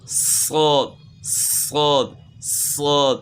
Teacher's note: سین پڑھیں گے بس زبان کو تالو کی طرف اٹھائیں تو صاد بن جائے گا، سین، یہ آواز سین، زبان تالو کی طرف اٹھائیں، صاد صاد صاد۔